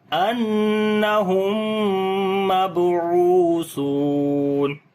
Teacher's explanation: میم ساکن کے بعد میم آ گیا، تو یہاں پر ادغام شفوی ہوگا، یعنی کہ میم کو غنے کے ساتھ پڑھیں گے · شفوی ہوگا، یعنی کہ میم کو غنے کے ساتھ پڑھیں گے، با کے اوپر قلقلہ کریں گے